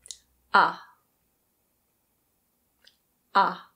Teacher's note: Open-mid means that the tongue is relatively low in the mouth and back means that it is pulled back. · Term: open-mid back unrounded vowel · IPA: /ʌ/